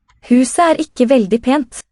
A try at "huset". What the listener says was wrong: Huset. The T is silent. This is the suffixed definite determiner.